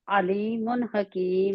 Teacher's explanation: عین پڑھنا ہے لیکن اس کو جھٹکا نہیں دینا